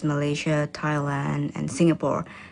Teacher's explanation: the countries are listed using a level tone that then falls for the last item in the list